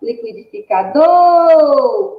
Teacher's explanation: a sílaba tônica da palavra liquidificador é do, porque é a que é pronunciada com maior intensidade